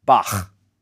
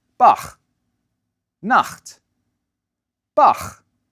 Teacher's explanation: The tongue bunches up in the back of the mouth, and air gets pushed out and over it. The result is a low, raspy sound, ch. Now you try it.